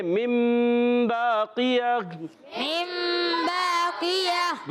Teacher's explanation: تو اب اقلاب ہوگا، یعنی نون ساکن تنوین کو میم سے بدل کر پڑھتے ہیں